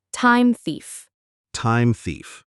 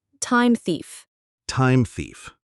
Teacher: Make sure your tongue is between your teeth for that th.